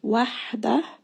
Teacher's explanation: Again, you are going to feel a little bit of that constriction, and you should feel like pressure against the middle of the throat. And ha is one letter of hams, and this means that there is going to be a lot of air as you say this letter